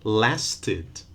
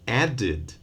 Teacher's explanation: if the verb in the base form ends in t or d, the two sounds we used so far, then we do add an extra syllable, and we're going to pronounce it id or id.